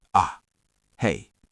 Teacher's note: a short, firm, single syllable said with a dropping tone